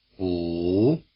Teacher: You might find the supplementary clue of length useful. The low tone is longer.